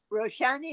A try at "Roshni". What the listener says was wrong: Roshni. It's spelled out with an A, just like the book Meher Roshni. But pronunciation wise, it's just Roshni.